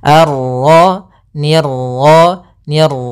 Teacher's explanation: ini salah untuk pantulan dalam huruf ro itu cukup sekali saja karena sifat ro ada sifat takrir yaitu pengulangan tapi hanya sekali